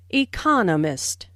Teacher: with the stress on the second syllable